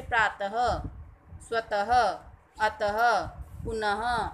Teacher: विसर्ग स्वर के बाद आता है। ठीक है, इसका उच्चारण ह की तरह होता है।